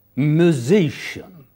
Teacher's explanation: in musician the middle part is stressed